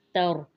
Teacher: ता को बरीक पढ़ेंगे और रा को मोटा पढ़ेंगे